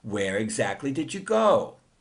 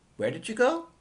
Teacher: Here, the second speaker says, where did you go? Using rising intonation to show that the speaker didn't hear the answer the first time.